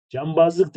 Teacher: B ünsüzü kendinden önceki N'yi M'ye çeviriyor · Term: NM değişimi